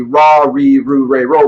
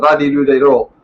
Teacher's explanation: the L sound is kind of somewhere between our L and R. So they have the radi-do-de-ro, and so if it was L, it would be la li lu le lo, and if it was R, it'd be ra ri ru re ro.